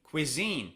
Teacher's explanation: Cuisine, it's on the second syllable.